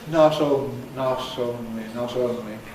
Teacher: A failure to make complete closure, so we get a kind of fricative. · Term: flat tongue fricative